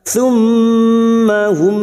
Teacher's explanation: mim yang bertasdid gunna musaddadah kita dengungkan selama 3 harokat. Summa hum, mim sukun bertemu ya idhar safawi, mim sukun dibaca jelas tanpa mendengung.